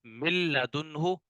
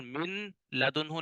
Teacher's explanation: लाम और रा में इदगाम होगा, गुन्ना नहीं होगा, और नून की आवाज भी नहीं आएगी